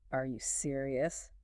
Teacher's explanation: If you say it flat, it's almost like you're not really asking, but put a little lift at the end.